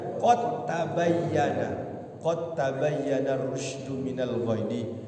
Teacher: Padahal di situ hilang, enggak ada qalqalahnya. Termasuk qad tabayyana, hilang dalnya.